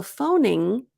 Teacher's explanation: the G stops in your throat it doesn't come out of your mouth like GG